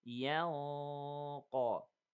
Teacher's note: إخفاء. And the sound of the إخفاء here is heavy because of the heaviness of the قاف.